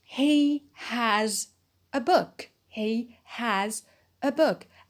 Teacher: when it is a main verb it is stressed because it means to own something